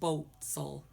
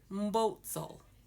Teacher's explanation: because we don't have an oo sound, our O's sound like an O. So instead of saying boots, we say boats.